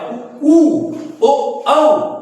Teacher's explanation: तो हमारा ओठ जो है ये सर्कल की तरह हो जाएगा गोला हो जाएगा · हमारा ओठ का आकार जो है गोला हो जाएगा वृत्त की तरह हो जाएगा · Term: वृत्त मुखी